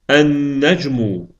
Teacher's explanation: biz əl artiklının ləmini deməli tələffüz etmədik. Bunun əvəzinə isə biz şəmsiyyə hərfin deməli üstündə fikir versəz deməli biz şəddə şəddələdik.